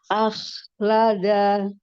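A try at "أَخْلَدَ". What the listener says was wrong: Dalnya disyiddahkan.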